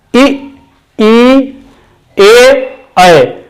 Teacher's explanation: ये वे स्वर है जिनके उच्चारण में हमारे ओठों की स्थिति गोल नहीं हो पाती। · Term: अवर्तुल